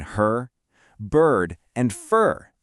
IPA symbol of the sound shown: ɜːr